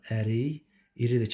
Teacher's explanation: k-dan sonra sait gəldiyinə görə bu y kimi tələffüz olunacaq